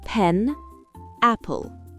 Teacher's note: En anglais, ce son est fortement aspiré au début d'un mot ou d'une syllabe accentuée.